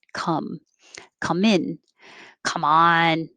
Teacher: calm and 20 uh your jaw can stay more closed because the vowel is uh and the tongue is pulled back in the mouth a little bit